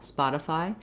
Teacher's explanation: If they think of it as a schwa, Spotify, they're going to be more accurate than if they try to say the I sound, Spotify. Simply because this I sound, they tend to do more tense like an E.